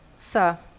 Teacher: Esse N, ele vai nasalizar o O. Então, quando tiver o N ou o M nasalizando a vogal anterior, isso é um dígrafo vocálico.